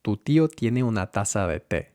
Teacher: With the tongue, tip of the tongue against the teeth. Ta, not cha.